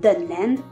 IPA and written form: dənland (Dunland)